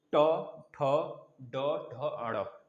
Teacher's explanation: जीभ को थोड़ा सा उलट के आवाज निकलेगी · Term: मूर्धन्य